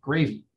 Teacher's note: the immigrant workers were saying gravy with a falling intonation, which has that feeling of being kind of direct, kind of rude, like gravy, take it or leave it, I don't care.